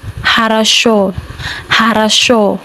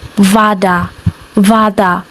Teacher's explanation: Yes, the O reduction or changes to a when it is not stressed but when it is stressed it remains as the O sound